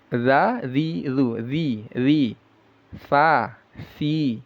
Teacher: sama makhrajnya dengan tsa ujung lidah yang menempel ke ujung gigi seri atas